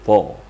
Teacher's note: mirip dengan makhraj ta, tapi diitbakkan, ditebalkan